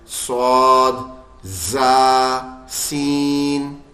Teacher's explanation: سب میں سیٹی ہلکی ہلکی سی نکلتی ہے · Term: سیٹی والے حرف